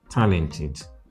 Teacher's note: talented with the stress on the first syllable